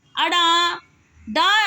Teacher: जिन व्यंजनों के उच्चारण में जिह्वा की उल्टी हुई नोक तालु को छूकर झटके से हट जाती है, उन्हें उच्छ्वित व्यंजन कहते हैं।